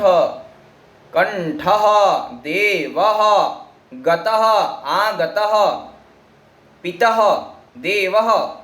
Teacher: विसर्ग का उच्चारण स्थान कंठ से होता है